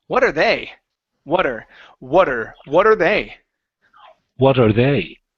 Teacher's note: let's work on a flap T with what